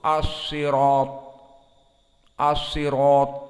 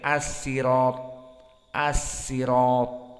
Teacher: Sya dengan sin sama-sama di ujung lisan. · Maka keduanya riwayat Ruwais dari Ya'qub al-Hadrami yang ada pada kita dan Qumbul an Ibni Katsir, maka mereka keduanya qara'a as-sin badalan minas shad, maka dibaca dengan sin, dan sin min dari hukum at-tarqiq, maka muraqqaqah. Adapun shad as-sirata mufakhamah, maka di sini perbedaannya dari segi sifah perbedaan yang besar.